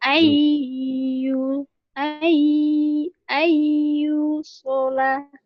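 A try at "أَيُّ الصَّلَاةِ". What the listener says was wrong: Ini cara pengucapan idgham tuh gini. Jadi jangan lama-lama. Ayu sholat gitu. Ayu sholat. Ayu sholat. Jadi di sini dia penyakitnya. Jadi jangan kelamaan.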